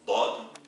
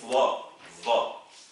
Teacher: ne confondez pas le dad, où la langue ne sort pas, dad, et le va, qui est une interdentale, c'est-à-dire bout de langue entre les dents